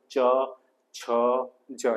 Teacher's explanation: જીભનો મધ્યભાગ અને ઉપરના તાળવાને સ્પર્શ કરે છે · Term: તાલવ્ય